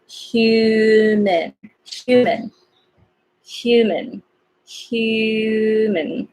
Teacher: this is H but it has like Y sound